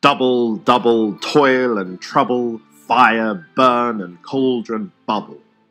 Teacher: the two-syllable long trochee, a stressed syllable followed by an unstressed one